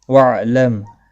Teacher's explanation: میم ساکن کے بعد حمزہ ہے، یہاں پر اظہار شفوی ہوگا، غنہ نہیں کریں گے